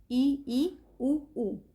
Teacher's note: संवृत। संवृत का मतलब क्या है? कि इसमें मुख द्वार जो है लगभग बंद सा ही रहता है।